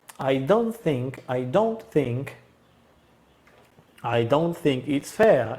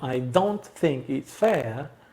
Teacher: Y tenemos doble bajada. Eso se llama tone concord.